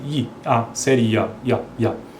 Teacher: i a série i i a i a sendo que i esse i a semivogal a Glide e o a é a vogal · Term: ditongos crescentes